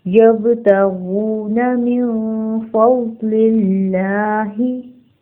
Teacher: बा के ऊपर साकिन है, यहाँ पर हम झटका देंगे, कलकला होगा. गॉइन हैवी लेटर है, उसको हम पुर पढ़ेंगे और 2 हरकत खींचेंगे.